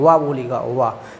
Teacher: दंत उष्ट व्यंजन बोल देते हैं क्योंकि दांत और ओठ से स्पर्श करता है